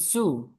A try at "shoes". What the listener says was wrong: Shoes. I want to hear the S, the last S. Can you say it again?